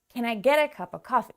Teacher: So, get and coffee are our strongest, most stressed keywords in this question. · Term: stress the keywords